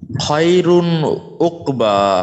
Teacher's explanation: এটা নুন মানে তানবিনের, এখানে রয়ের উপরে 2 পেশ, তার মানে তানবিনের পরে হলকের একটা হরফ অর্থাৎ আইন আসছে, সেই ক্ষেত্রে তানবিনটাকে আমাকে স্পষ্ট করে গুণা ছাড়া পড়তে হবে